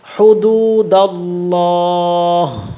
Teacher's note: আল্লাহ শব্দের লামটা কিন্তু পুর হবে, এখানে মোটা হবে